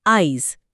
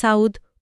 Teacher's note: হ্যাঁ, অপিনিহিতি, অ্যাপেন্থেসিস। এখানে শব্দের মধ্যে থাকা ইকার বা উকার তার যে স্বাভাবিক জায়গা তার থেকে একটু আগে চলে আসে। ঠিক। যেমন আজি শব্দটা আমরা অনেক সময় উচ্চারণ করি আইজ, ওই ইটা জের আগে চলে এলো।